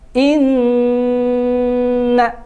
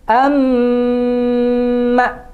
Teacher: ketika ada Nun bertasdid dibacanya dengung ditekan ditahan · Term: ghunnah musyaddadah